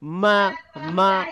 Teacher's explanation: যেমন মিম বলতে গিয়েও মা, মা বলতে গিয়েও নাকের মধ্যে থেকে গুনগুন একটি সাউন্ড আসে, বা বলতে গিয়ে সেটা আসছে না। তাহলে যখনই মা বলছি গুনগুন সাউন্ড আসছে, তো এই গুন্নাটাকে আরেকটু গুনগুন করে পড়তে হবে আমাদের।